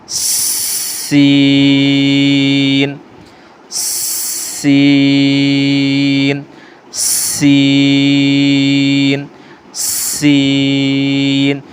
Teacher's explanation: دونوں دانتوں کو آپس میں قریب کر کے اور اس کے درمیان میں پیچھے کی جانب زبان کو رکھ کے پھر ہوا کے پریشر کے ساتھ پھر اس کو لمبا کر کے پڑھا جاتا ہے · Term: سیٹی والے